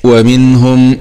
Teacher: نون سكون مع الإظهار الحلقي ومن، لأن النون هنا بعدها حرف هاء والهاء من حروف الإظهار المجموعة في البيت، همز فهاء ثم عين حاء مهملتان ثم غين خاء.